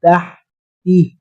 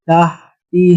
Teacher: بالکل باریک آواز میں تہ تی، آگے ہم نے آواز کو بھاری کیا